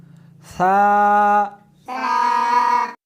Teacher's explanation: اس حرف کو زبان کو دونوں دانتوں کے درمیان رکھ کر پڑھیں گے۔